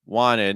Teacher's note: Notice that wanted, the T disappears because it's after the N.